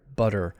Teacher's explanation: so notice the difference in the length of the syllables butter the first syllable uh is a regular length butter and the second one is very short